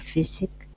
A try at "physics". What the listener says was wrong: Close. You're missing that z at the end. Physics.